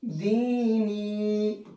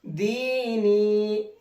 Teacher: देखिएगा, दाल या जेर दी, नून या जेर नी, दीनी। मैंने दोनों को खींच करके पढ़ा है, दाल को भी और नून को भी। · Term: या मद्दा